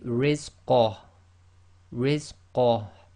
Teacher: Okay, but if you're stopping, again the ha goes sakin, so this will simply be rizqah, rizqah, and again you've got to bring a tiny bit of the ha from the bottom of your throat